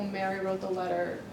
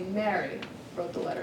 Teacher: so they're placing the focus on the subject, which is Mary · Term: contrastive focus